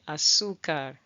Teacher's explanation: at the end of the word, we don't normally put an emphasis on the R, okay? Azúcar, okay.